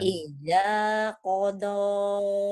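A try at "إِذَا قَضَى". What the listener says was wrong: jangan ija, idza Bu, idza. Idza qada.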